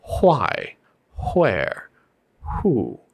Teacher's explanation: the WH sound in why, what, where, when, how becomes a hua